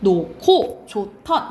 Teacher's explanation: 히읗 뒤에 기역, 디귿, 지읒이 오면 이것은 합쳐져요. 그래서 각각 키읔, 티읕, 치읒이 됩니다.